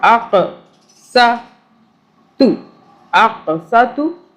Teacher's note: قاف پہ قلقلہ کیا جھٹکے سے پڑھا